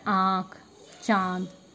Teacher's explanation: उच्चारण मुख और नाक दोनों से होता है, इसलिए इसको अनुनासिक बोलते हैं।